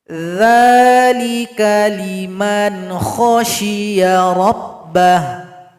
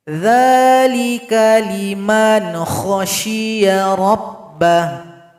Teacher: Salah satu contoh, dzalika liman khasyiya rabbah. Liman kha, nun sukun berjumpa kha, izhar halqi, dibaca jelas, tidak boleh dengung.